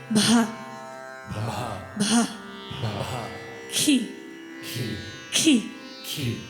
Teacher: this is a short burst, a short exhale that comes along with the consonant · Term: aspirated consonant